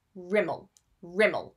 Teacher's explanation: with the stress on the first syllable